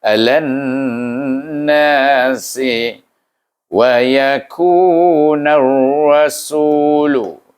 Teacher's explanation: Jadi kalau kita bertasydid, maknanya kita kena baca dengan idgham samsi dengan gunnah, wajib gunnah